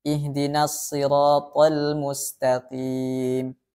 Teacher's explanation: Huruf qaf dalam keadaan kasroh ada sedikit penurunan kadar ketebalan.